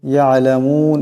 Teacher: আইন আছে আওয়াজটা গলা থেকে চাপ দিয়ে আনতে হবে